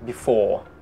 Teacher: R sound at the end is not pronounced, oke? Bunyi R di akhir, R tidak dibaca at all. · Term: British R sound